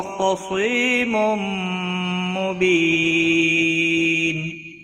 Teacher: تنوین کے بعد حروف یرملون کا میم آیا ہے، ادغام با گنہ ہوگا۔ بی یا مدہ ہے، ایک الف کے برابر کھینچ کر پڑھیں گے، اور وقف کی صورت میں نون ساکن پڑھا جائے گا، وقف بالاسکان ہوگا، 3 سے 5 الف کے برابر کھینچ کر وقف کریں گے۔